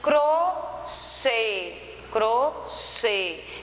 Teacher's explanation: então percebe que o chê ele tem uma tonicidade maior então é oxítona e é acentuada por que terminou na com a letrinha é